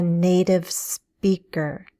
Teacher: Note how I flap the T in native.